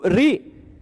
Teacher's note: ऋ मूर्धा श मूर्धा उच्चारण स्थान एक जैसा ऋ विवृत श भी विवृत